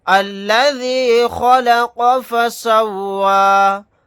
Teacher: خا کو اور قاف کو یہاں پر موٹا یعنی پر پڑھیں گے